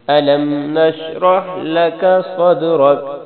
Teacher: جب کاف پر وقف کریں گے تو کاف پر جزم آ جائے گی، کاف کی حرکت گر جائے گی